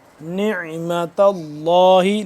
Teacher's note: عین حلق کے درمیانی حصے سے اور کھچاؤ پیدا کر کے